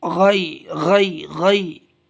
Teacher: غین یا زبر غی، گاف نہیں نکالیں، گا نہیں، غی غی حلق سے